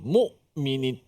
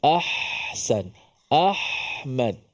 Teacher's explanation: seperti mana hamzah tertahan, mu'minin, tertahan, berhenti, putus suara. Suara terlepas seperti ha, ahsan, ahmad, contoh.